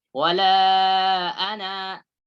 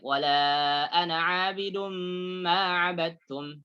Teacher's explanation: Kalau berhenti dibaca panjang loh ya. Wala ana panjang. Tapi ketika lanjut lafzal ana baca pendek.